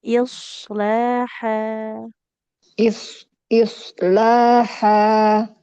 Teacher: jadi lamnya panjang ya karena ada alif kecil is sama shadnya tebal